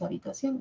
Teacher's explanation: es la última la que presenta el diptongo, porque es la abierta la que tiene la mayor fuerza de voz